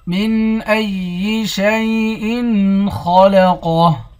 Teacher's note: من ای حمزے کو یا کے ساتھ ملا کر یا کو سختی کے ساتھ جمع کر پڑھیں گے، خا اور قاف دونوں کو موٹا پڑھیں گے، آخر میں ہاں ساکن ہے۔